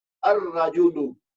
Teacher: اس میں ہم لام کو چھوڑ دیں گے اور را کے اوپر تشدید ڈال دیں گے اور یہ حمزۃ الوصل کو را سے ملا کر رجل پڑھیں گے.